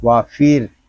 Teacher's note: کیا ہے۔ واو زبر وا، فا را زیر فیر، وافیر، یہاں را کو باریک پڑھیں گے کیونکہ را ساکن سے پہلے زیر آ گیا ہے